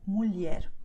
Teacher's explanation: you have the combination LH, which sounds like L and a tiny I